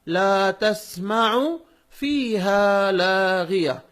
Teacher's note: اس میں عین کو اندر سے اچھا پڑھیے تاکہ وہ حمزہ سے نہ بدلے اور معنی نہ بدل جائے.